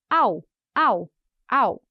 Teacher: a gente vai usar o L como uma semivogal